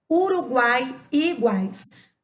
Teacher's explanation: nós teremos uma vogal que o som vai ser mais forte com duas semivogais então vai ser uma forte com duas fracas lá no ditongo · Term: tritongo